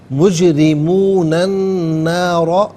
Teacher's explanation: نارا میں را پر زبر ہے، را کو پر کر کے پڑھا جائے گا